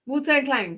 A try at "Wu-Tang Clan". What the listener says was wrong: No, there is no G in Clang. They're not Wu-Tang banging